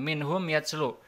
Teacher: Jadi mimnya ini harus dibaca jelas, tidak boleh dengung. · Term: izhar mimi